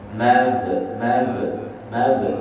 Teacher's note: sebab huruf ba makhraj ba bibir di atas dengan bibir di bawah, pertemuan bibir atas dengan bibir bawah ni ringan saja.